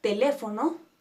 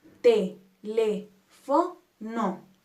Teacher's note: la palabra teléfono se divide en cuatro t lefo no y acentuamos en le que es nuestra antepenúltima sílaba